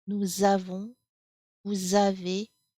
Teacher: you will do the liaison here between the nous and the voyelle a.